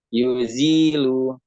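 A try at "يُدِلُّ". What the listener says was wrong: Salah. Kamu ngeja yudil, tapi ketika membaca yuzil gimana itu? Ini huruf apa?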